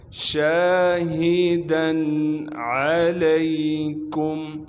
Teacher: عین کو صاف کر کے گلے سے نکالیں گے۔